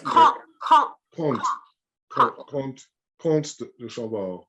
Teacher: So you don't really pronounce the M.